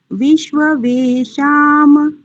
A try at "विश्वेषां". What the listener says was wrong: फिर से ध्यान से पढ़ो। विश्व वेशाम नहीं है, एक तो यहाँ पर ध्यान दो, और फिर से एक बार उच्चारण करो ध्यान पूर्वक वही त्रुटि कर रहे हो माता जी। विश्व वेशाम थोड़ी है, ध्यान से देखो। विश्वे शाम, आप बोल रहे हैं विश्वे वेशाम। दो बार आप वे कर रहे हैं, वे तो एक ही बार है।